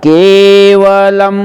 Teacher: केवलम है तो के बोल दिया हमने, लेकिन इसको टाइम प्रॉपर 2 टाइम देना चाहिए। केवलम, के को 2 टाइम, दीर्घ मात्रा है